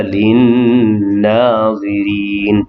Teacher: Nun yang bertasydid wajibul gunnah, wajib dengung 2 harakat pada lin-nazirin.